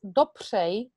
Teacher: In our case, dopřej, what's helping is the P before the R. A P works as a little ignition moment, and it allows the sound to spring off the tip of a tongue. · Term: fricative consonant